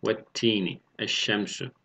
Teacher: İdgam-ı şemsiye lam-ı tariften sonra şemsi harflerden biri gelirse idgam-ı şemsiye olur. Yani lam harfi şemsi harfe idgam edilir ve şeddeli bir harf gibi okunur. Tam idgam gerçekleşmiş olur.